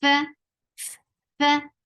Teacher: For fatha, open your jaws. The sound is very short.